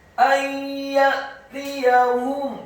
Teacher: Min qabli ayyatiyahum, kata ayyatiyahum, alifnya dibaca tipis, fathah satu harokat, nun yang sukun bertemu dengan huruf ya. Hukum bacaannya adalah idgham bil gunnah, memasukkan dengan dengung atau dengan gunnah.